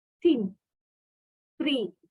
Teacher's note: In pronouncing the first sound in the words thin, three, theta, and the final sound in teeth and bath, notice that the tongue tip is placed between the upper and lower teeth.